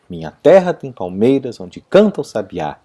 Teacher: E aí você vai perceber uma outra coisa, todas as terceiras sílabas e todas as 7 sílabas, sétimas sílabas, são tônicas. E isso é que garante a cadência do poema.